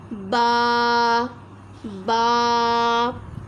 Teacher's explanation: ये जो आपका बा है दोनों होंठों के अंदरूनी तरीके मिलने से अदा हो रहा है।